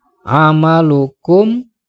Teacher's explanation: hukumnya idhar syafawi sebab ada mim sukun menghadapi huruf ain nah ketika dibaca huruf mim nya tidak boleh dengung tetapi harus jelas